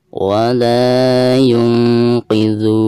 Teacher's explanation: Nah di sini ada nun sukun ya, lalu berhadapan dengan salah satu huruf ikhfa, di sini huruf qaf. Maka cara membaca nun sukun tersebut itu harus disamarkan disertai dengan gunah